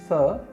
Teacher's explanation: यह एक मूर्धन्य व्यंजन है, जिसके उच्चारण के समय हमारे मुख के अंदर जीभ मूर्धा को स्पर्श करती है।